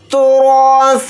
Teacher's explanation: रा को यहाँ पर मोटा यानी पुर पढ़ेंगे क्योंकि रा के ऊपर ज़बर है